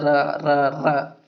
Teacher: रा को प्रकंपित या लुंठित वर्ण बोला जाता है। प्रकंपित का मतलब होता है कंपन।